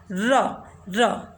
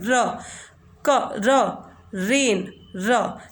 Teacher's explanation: अगर हम देखें इसको, आप अगर इसको महसूस कीजिए, इसको बोल कर देखिए, तो जो टिप होती है टंग की वो हम एक टैप करते हैं उसको ऊपर के साइड, कहीं ना कहीं मतलब हमारे सरफेस से जो है हमारे माउथ में सरफेस से ये टकराती है। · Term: flap